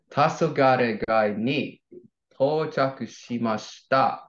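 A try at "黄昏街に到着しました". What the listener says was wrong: Perfect. Awesome.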